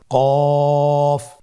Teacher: কফের মাখরাজ হলো জিহ্বার গোড়া তার বরাবর উপরে তালুর সঙ্গে লাগিয়ে উচ্চারিত হয়। জিহ্বার গোড়া তার বরাবর উপরে তালুর সঙ্গে লাগিয়ে উচ্চারিত হয়।